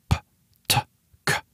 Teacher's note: when I say P, T, or K, my vocal cords are not vibrating. But if I do vibrate my vocal cords, they turn into different letters.